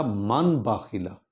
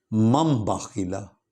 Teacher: من بعدی، من باخیلا، اصل میں تھا من باخیلا، لیکن نون جزم والی نون کے بعد با والا حرف آ گیا ہے، با آ گیا ہے، تو اب ہم نے قاعدے کے مطابق، قاعدہ اقلاب کے مطابق اس نون کی جگہ میم پڑھنی ہے